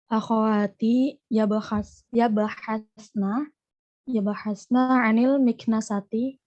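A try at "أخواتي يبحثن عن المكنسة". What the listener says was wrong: Sahih, akhwati yabhathna 'anil miknasati. Nah, intonasinya jangan kayak orang bertanya, ya. Ntar orang Arab bingung.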